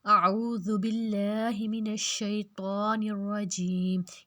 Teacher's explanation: اعوذ باللہ من الشیطان الرجیم، یہاں پہ ہم نے اللہ لفظ کو پتلا کیا کیونکہ پیچھے زیر ہے